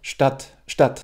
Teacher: Es ist irgendwo in der Mitte zwischen dem kurzen A und dem langen A auf Deutsch.